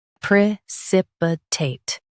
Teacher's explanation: In US, stress sip.